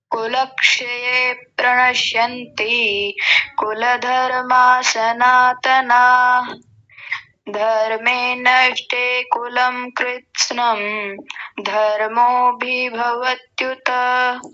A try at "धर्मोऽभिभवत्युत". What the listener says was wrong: अधर्मो, धर्मो नहीं, अधर्मो।